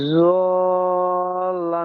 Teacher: টান হবে পাঁচ আলিফ, জল্লান। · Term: লাজিম